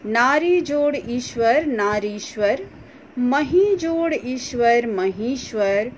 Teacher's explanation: दूसरी तरफ हम लोग देख रहे हैं दोनों तरफ दीर्घ ई है और बदलाव होने के बाद यानी जुड़ने के बाद फिर ये दीर्घ ई में ही बदलेगा